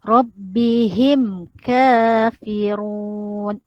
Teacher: Mim mati berjumpa dengan huruf kaf, dia jelas izhar. Jadi jangan dengung.